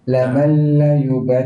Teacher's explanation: Laman. Nun tak bunyi langsung sebab bunyi dengan lam.